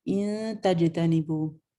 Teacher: جیم پہ آپ کا کلکلا ہے